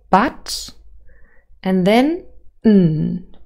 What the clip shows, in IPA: bʌt.ᵊn